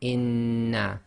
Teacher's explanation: However, we are going to do this gemination, which means we've got to effectively merge the two noons together and hold it for a little bit. So we're going to pronounce this as inna. · you pronounce the first noon sakin, and then the sound of the second noon comes directly out without taking a pause or breaking the sound.